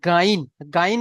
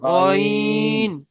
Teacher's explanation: মুখে গোল করে পড়তে হবে লম্বা নয়